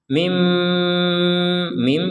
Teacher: ketika kita bilang mim gitu maka di rongga hidung kita didengungkan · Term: mim bertasdid